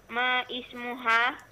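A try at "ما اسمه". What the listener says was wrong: Masmuhu. Masmuka, bukan ma ismuka. Begitu pula di sini. Masmuhu, bukan ma ismuhu. Masmuhu.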